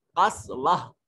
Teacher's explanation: وہ تا حالت وقف میں ہا بن جائے گی. اس کو قسوت نہیں پڑھیں گے، قسوہ پڑھیں گے. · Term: گول تا